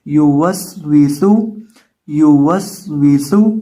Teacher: یا کو، واو کو، اور اس واو کو اور آخر پہ سین کو پڑھتے وقت ہونٹوں کو گول کر کے پڑھنا ہے